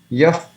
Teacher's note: when the visarga is followed by pa or pa, then instead of visarga we can pronounce soft fa.